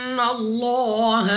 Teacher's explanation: اس کے بعد لام آف اللہ سے پہلے حرف پر ہے زبر، تو اس لام آف اللہ کو پر یعنی موٹا پڑھیں گے